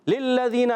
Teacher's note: یہاں پر تنوین کے بعد لام آ رہا ہے حرف ارمن سے، ادغام بلا غنہ کا قاعدہ ہوگا. غنہ نہیں کریں گے مگر ادغام کریں گے، ملائیں گے. للذین لام کو لام سے ملا رہے ہیں، لام مشدد ذرا رک کر ادا کریں گے.